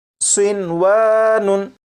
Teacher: लेकिन नून साकिन और वाव क्योंकि एक लफ्ज़ में इकट्ठे हैं इसलिए यहाँ पर इदगाम नहीं करेंगे और इसे पढ़ेंगे सिनवानुन।